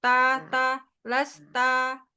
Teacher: Nah, ujung lidahnya tuh ditempel ke situ. Terus pangkal lidahnya jangan naik. Jadi to, jangan to, tapi ta, lasta, jangan lasto gitu. Kalau lasto itu pasti pangkal lidahnya sedikit naik.